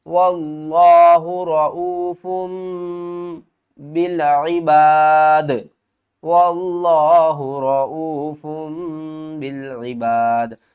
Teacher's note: تنوین کے بعد اگر با آ جائے تو ہم تنوین کی آواز کو میم کی آواز میں بدل کر پڑھیں گے. یہ جو چھوٹی سی میم ہے یہ اس لیے آئی ہے کیونکہ تنوین کے بعد آگے با آ رہا ہے.